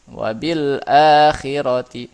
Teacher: Cara bacanya membunyikan lam sukun dengan jelas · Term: izhar qamari